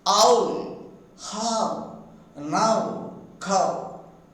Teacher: forming u by raising the back of the tongue and sounding and then moving a towards u. You see, first the phoneme a is produced, then the vowel phoneme u is produced, and then a is moved towards you.